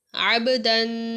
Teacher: دال پر تنوین کی وجہ سے غنہ بھی ہو رہا ہے